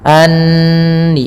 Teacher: tahan suara nunnya karena di sini ada bacaan gunnah, kita tahan dengan 2 harakat. Anni baru dilepas.